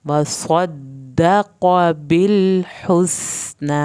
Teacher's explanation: وصدق بالحسنى، بل پہ لام نہیں ہلانا، ہا کو حلق سے پڑھنا ہے، سین کو سیٹی کی آواز کے ساتھ پڑھنا ہے، نا کھڑی زبر کو لمبا کھینچا جائے گا.